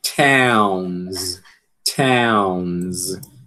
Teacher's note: Veja que essa realização aqui, z, né? Ela é decorrente do fato do som n ele ser um som vozeado.